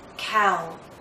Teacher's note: you'll see movement from a more open position to a more closed position this time we're moving from around here to here so our